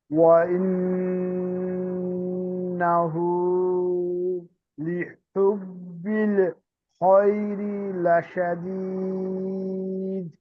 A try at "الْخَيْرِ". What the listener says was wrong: লিহুব্বিল এই পর্যন্ত সুন্দর হয়েছে, খয়রে আর একটু সুন্দর হবে। খয়রি খটা একটু উচ্চারণ হলে একটু সুন্দর হতো।